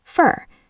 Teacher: usually the vowel in these words turns into a tiny sound called the schwa